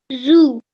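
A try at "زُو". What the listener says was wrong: Okay, just a tiny bit shorter. Zoo. Okay, so when we make this letter sound, we have to round our mouth because this is one of the thick, heavy letters, okay?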